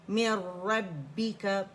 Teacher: را فتح را ہے، موٹائی سے پڑھا جائے گا